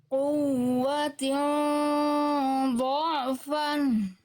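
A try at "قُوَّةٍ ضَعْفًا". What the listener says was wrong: Tapi tekan. Ain jangan jadi ragu. Dha'fan quwwatin dha'fan.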